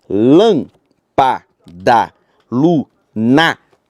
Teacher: A antepenúltima sílaba é a tônica e por isso ela é acentuada. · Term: proparoxítona